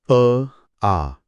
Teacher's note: यात माझी जीभ, ओठ किंवा दात एकमेकांना कुठे स्पर्श करत नाहीयेत. हवा थेट माझ्या फुफ्फुसातून बाहेर येतेय. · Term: स्वर